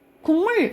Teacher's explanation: 기역, 디귿, 비읍의 여러분 공통점은 뭐냐면 얘네는 파열음이에요. 파열음이 비음을 만나서 비음이 되는 거야. 근데 각각 기역은 이응으로 바뀌고요. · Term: 비음화 현상